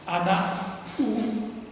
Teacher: The word for I, the genitive for I, my child, is u, which starts with a glottal stop. So when you have anak u, you've got two glottal stops.